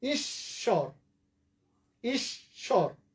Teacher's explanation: এই যে দেখো, এই জন্য দিত্য। ঈশ্বর শব্দের মাঝখানে বফলা আছে তালব্য শয়ের সাথে, ফলে এই তালব্য শটা ডাবল হবে।